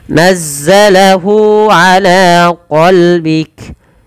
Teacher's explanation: mad silahnya kita namakan mad silah qasrah yang pendek, yaitu cukup 2 harokat.